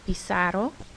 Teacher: notice it sounds like a S, not a Z sound. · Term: S sound